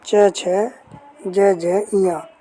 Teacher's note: च वर्ग का उच्चारण स्थान किससे होगा? तो तालु से।